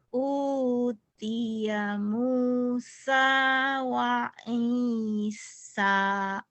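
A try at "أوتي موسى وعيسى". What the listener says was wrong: udah bisa hurufnya tapi penekanannya belum benar. Nih ya, yang ditekan yang ditahan mana? Mu. Udah tahu yang panjang-panjang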